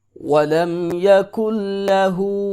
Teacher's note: وَلَمْ يَكُنْ لَهُ، یہاں پہ کچھ لوگ ناک میں بھی آواز لے کے آتے ہیں، مثلا وَلَمْ يَكُنْ لَهُ، یہ غلط ہے، کاف کو ڈائریکٹ لام کے ساتھ ملائیں گے، نون بالکل سائلنٹ ہے